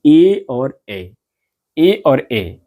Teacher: कंठ तथा तालु दोनों के सहयोग से जिन वर्णों का उच्चारण होता है उन्हें हम कंठ तालव्य वर्ण कहते हैं